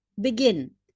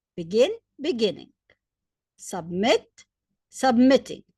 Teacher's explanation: The last syllable is stressed.